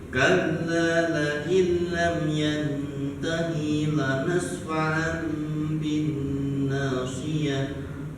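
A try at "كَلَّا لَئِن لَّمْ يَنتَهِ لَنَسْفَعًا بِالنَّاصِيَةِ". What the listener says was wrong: Tapi di hi-nya ya Pak. Di peralihan kata hi ke la. Jadi ada pendek aja. Jadi kalla la'in lam yantahi lanas.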